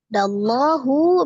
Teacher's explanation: alif lam yang melekat pada lafaz Allah karena sebelumnya berharakat fathah maka dibaca dengan tebal